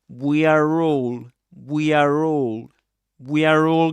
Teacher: he does pronounce the R there when he says we are all